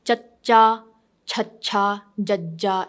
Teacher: you use your tongue and it hits your middle of your upper palate